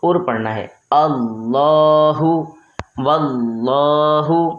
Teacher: ہم نے اللہ تبارک و تعالیٰ کے لام کو پر یعنی موٹا پڑھنا ہے